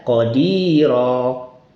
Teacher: Kalau tanwin fathah diganti bunyi panjang alif.